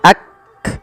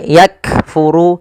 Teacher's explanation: bacaan syiddahnya dulu, yaitu kaf itu ditahan suaranya ak, baru dikasih hamas. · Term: sifat syiddah